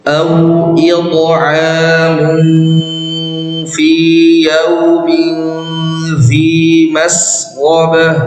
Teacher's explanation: Fa ini salah satu huruf ikhfa, maka bacanya dengung dan samar ya, bersiap-siap untuk menyebut huruf fa. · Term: ikhfa hakiki